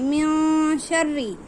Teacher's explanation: من شر ما خلق، من میں نون ساکن کے بعد حروف اخفا کے 15 حرفوں میں سے شین آیا ہے، اس لیے نون کی آواز کو ایک الف کے برابر ناک میں چھپا کر پڑھیں گے۔ من شری ایسے۔ · را کے نیچے زیر ہے، اس لیے باریک آواز سے پڑھیں گے۔